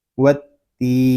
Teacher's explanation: تا کو ہم ایک الف تک کھینچ کر پڑھیں گے کیونکہ یہاں پہ یا مدہ ہو رہا ہے۔ یا مدہ اس لیے ہو رہا ہے کہ یا ساکن سے پہلے زیر آ گیا ہے۔